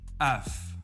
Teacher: v can become more like f, such as af.